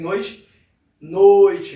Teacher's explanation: Primeiro vogal, depois semivogal. Ou seja, o som mais forte vindo primeiro e logo em seguida o som mais fraco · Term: ditongo decrescente